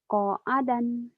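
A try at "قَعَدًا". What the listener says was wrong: Gak ada yang panjang.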